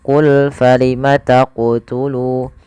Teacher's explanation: Maka ketika melafalkan huruf qaf di sini harus memantul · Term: qalqalah